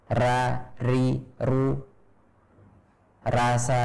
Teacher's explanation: ro dalam bahasa kita itu banyak getarannya, lebih dari yang terdengar ketika mengucapkan ro dalam bahasa Arab